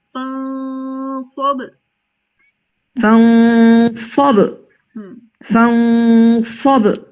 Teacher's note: فانصب. اس کا غنہ جو ہے وہ آگے صاد آ رہا ہے نا تو ہم نے اس کو ہیوی پہ رکھنا ہے